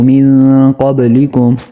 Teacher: با پر قلقلہ کرنا ہے